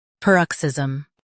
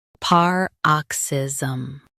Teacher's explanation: US says per, UK par. Emphasize ox.